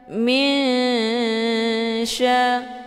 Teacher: kalau dibandingkan tingkat dengungan dan kesamaran, itu seimbang atau setara. · Posisinya tidak begitu dekat, juga tidak begitu jauh. Cara bacanya, nunnya disamarkan kemudian siap-siap menuju ke huruf sya. Min sya. Hukum bacaan ikhfa awsat, dibacanya sambil didengungkan.